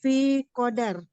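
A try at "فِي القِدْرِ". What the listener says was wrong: Fil kidri. Qafnya kasro ya. Kalau qafnya fathah nanti beda arti. Kalau qafnya di fathah nanti qadar takdir ya.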